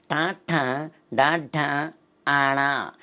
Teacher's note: నాలుకని పైకి తన్ని కింద తీసుకొస్తామండి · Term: మూర్ధన్యాలు